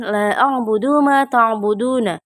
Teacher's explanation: huruf mat bertemu hamzah di lain kata sehingga dibaca panjang 2, 4 atau 5 harakat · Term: mat jaiz munfasil